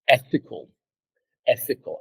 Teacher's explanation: you notice that the first syllable is the highest.